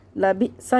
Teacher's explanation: ساکن حمزہ کو جھٹکے کے ساتھ پڑھیں گے